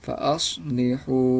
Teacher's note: Nah, pada bagian ini huruf H yang berharokat dhammah bertemu dengan huruf waw mati, maka huruf H berharokat dhammah tadi dibaca panjang 2 harokat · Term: mat tabi'i